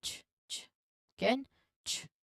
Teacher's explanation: a combination of a T sound and the SH sounds blended together very quickly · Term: CH sound